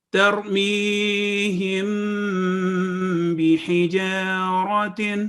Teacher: میم اور با کی آواز 2 سیکنڈ نیزل ساؤنڈ اخفاء شفوی.